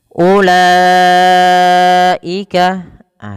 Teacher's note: Dan inilah yang dinamakan dengan mad wajib muttasil, maka wajib dipanjangkan empat harakat pada lafal lanya. dan tidak boleh dikurangi atau lima harakat.